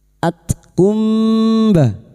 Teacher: huruf ta yang memiliki sifat hames dan syiddah